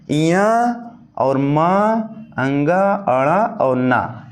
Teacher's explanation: इनका उच्चारण स्थान नसिका होता है। प्रत्येक वर्ग का पांचवा अक्षर आपका नसिका होता है।